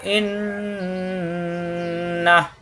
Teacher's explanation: নুনে তাজদিদ অজিব গুন্না, আর তাজদিদ থাকলে হরফটা দুইবার